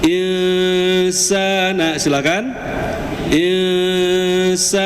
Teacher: kita fokus lagi ke huruf sin menghadapi alif. Di situ mad tabi'i, bacanya 2 harokat.